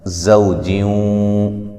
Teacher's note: زا کو سختی سے سیٹی سے ادا کریں گے